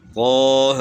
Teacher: جن کے اوپر کھڑی رکعت ہیں ان کو تھوڑا کھینچنا ہے، زیادہ نہیں کھینچنا، 1 الف کے برابر۔ طہ، اب یا کے اوپر کھڑی زبر ہے تو اس کو تھوڑا کھینچنا ہے، سین کو زیادہ کھینچنا ہے۔